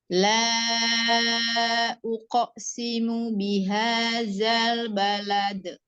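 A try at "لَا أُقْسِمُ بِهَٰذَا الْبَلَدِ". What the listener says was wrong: Bihadzal, jangan diayun zanya. Bihadzal balad, langsung ya. Qaf sukunnya, qalqalahnya juga jangan terhenti. Uqsimu, langsung. Uqsimu bihadzal balad.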